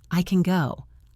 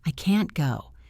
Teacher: In the first one, the go is the loudest word. In the second one, the can't is the loudest word.